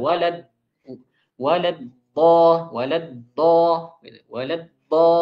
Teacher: Jadi sebagian orang ada yang mengeluarkannya dengan dal yang tebal.